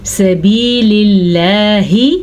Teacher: اللہ کا نام باریک پڑھنا ہے کیونکہ زیر آ گئی